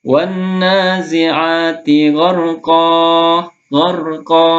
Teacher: Tanda bacanya mad iwad itu ada tanda baca fathatain sebelum alif. Maka dibaca dua harokat ya. Satu alif atau dua harokat.